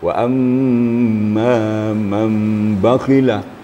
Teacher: Wa amma man bakhila, untuk menyempurnakan bahawa di situ adalah huruf mim. Kerana huruf mim itulah huruf gunnah, huruf sengau ya. Maka timbullah suara sengau di situ.